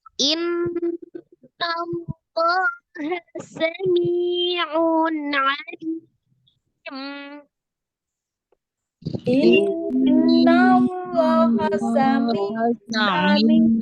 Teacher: Inna ada nun tasdid, wajib ghunna ya.